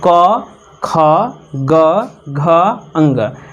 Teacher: कवर्ग का जो है उच्चारण स्थान क्या होगा, तो कंठ होगा। कवर्ग का क से लेकर अंग तक का जो उच्चारण स्थान है कंठ है।